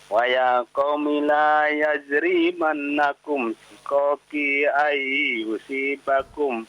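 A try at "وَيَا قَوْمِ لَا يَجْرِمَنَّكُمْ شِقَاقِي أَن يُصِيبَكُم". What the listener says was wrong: Coba Pak, perhatikan panjang pendeknya, ya. Perhatikan panjang pendeknya ketika membaca, ya. jangan dipanjangkan, ya, pendek, ya. Mi dipendekkan, jangan dipanjangkan.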